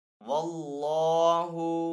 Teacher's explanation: अल्लाह अज़्ज़ व जल के नाम से पहले वाले हर्फ के ऊपर जबर है तो इसलिए अल्लाह अज़्ज़ व जल के नाम को यहाँ पे पुर पढ़ेंगे